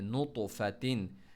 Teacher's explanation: नुतु bounce तो के ऊपर, कलकला करना है , और साथ में हैवी लेटर भी हैं, इस्तिअला भी है,